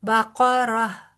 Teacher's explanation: را بقرة بھی پر پڑا جائے گا کیونکہ اس کے اوپر زبر ہے